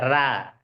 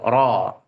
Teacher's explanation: Selanjutnya adalah ro tebal yaitu ro yang berharakat fathah. Ro maka enggak usah tersenyum. Ro ditebalkan. Jadi enggak boleh dibaca ra. · Ro ditebalkan. Jadi nggak boleh dibaca ra, itu salah. Harus tebal, ro.